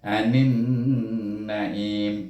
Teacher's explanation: dengan makhraj matinya ialah huruf mim, iaitu im, terus tutup bibir